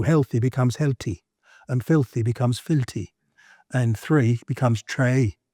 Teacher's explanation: the soft TH, they pronounce both the T and the H.